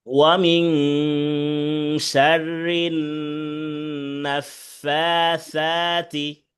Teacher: শাররিন গুন্না আছে, ওয়ামিন গুন্না আছে, নুন সেকিনের পরে শিন আসছে ইকফার হরফ, আর এখানে রিন হরকতের বামে নুনে তাসদিদ আসছে, এই কারণে ওয়াজিব গুন্না।